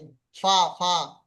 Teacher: তাহলে নিচের প্রথমে প্রথমে বলছে প্রথমে বলছে নিচের ঠোঁটের ভিজে অংশ, নিচের ঠোঁটের ভিজে অংশ এবং সামনের উপরের দুইটো দাঁতের আকার সাথে লাগিয়ে উচ্চারিত হবে।